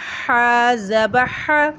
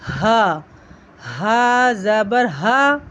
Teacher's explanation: ح زبر ح، حلق سے آواز نکالی تھی، لیکن اس کی آواز حلق کے آخری حصے سے نکلے گی